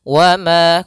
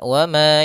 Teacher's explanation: kalau kami sendiri menggunakan dengan idbaq, yang dia mulutnya tertutup dengan rapat. Wa ma, kalau furjah ada sedikit rongga.